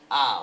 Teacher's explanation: in Spanish you have a which is Central and open